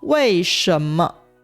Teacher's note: Cách phát âm bản xứ của wèi shénme (為什麼) Sẽ phát âm thanh hai gốc của 什 Rất giống với thanh ba